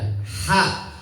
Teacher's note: Ha itu makhrajnya di tengah tenggorokan